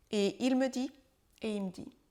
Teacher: Le me de « il me dit » est lui aussi contracté et ça donne « et il me dit »